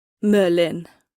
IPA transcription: ˈmœːlːɪn